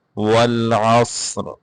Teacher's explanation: والعصر، اس کو ول نہیں پڑھنا، کلکلا نہیں کرنا شروع میں، والعصر، عین کو واضح کر کے پڑھنا ہے، صاد کو موٹا کر کے پڑھیں گے